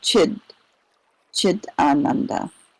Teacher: So Sat, Chit, and then the T in Chit, when it encounters a long A, turns into a D sound.